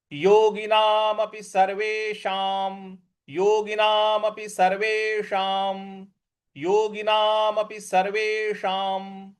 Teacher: देखिए, स सर्वे और उसके बाद जो षटकोण वाला श है, सर्वेशाम, तो जीभ को रोल करके ऊपर मूर्ध्वा पे लगाएंगे। और जो अनुस्वार है उसके आगे म लिखा हुआ है, तो इस अनुस्वार का उच्चारण भी हमें म ही ले आना है।